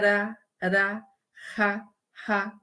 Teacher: As vibrantes, as vibrantes são R, que quando a gente fala o R, quando a gente pronuncia o R em língua portuguesa, de fato, parece que ele vibra